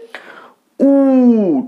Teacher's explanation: ঠোঁটটা স্বাভাবিকভাবে যেমন থাকে তার থেকে অনেকটা বেশি উ কুঞ্চিত হচ্ছে বা ছোট হয়ে আসছে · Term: কুঞ্চিত স্বরধ্বনি